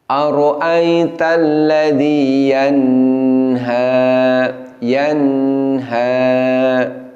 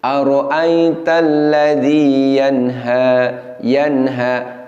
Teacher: istilahnya adalah Hoon Na tune nagis Oh dengung yang kurang jadi dengung yang sangat pendek tidak boleh sampai dua harokat apalagi tiga harokat